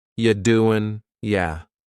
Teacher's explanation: The word you is reduced to ya.